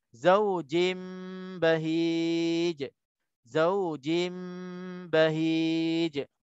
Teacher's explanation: Tanwin bertemu dengan ba, hukumnya iqlab dengung dua harakat.